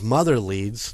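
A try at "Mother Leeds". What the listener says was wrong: that part sounds like you're saying motherly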